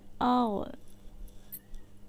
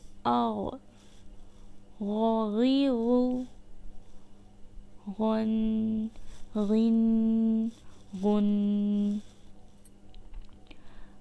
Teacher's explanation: غین حلق کے اوپر والے حصے سے ادا ہوتا ہے۔ غین غو حمزہ غین زبر آغ۔